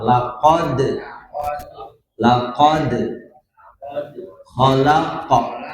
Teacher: ada huruf dal dan huruf qof ya jadi dipantulkan ya Qalqalah